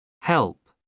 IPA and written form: hɛlp (help)